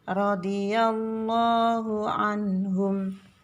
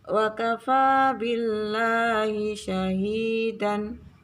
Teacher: ini lamjalalah dibaca tebal tafkhim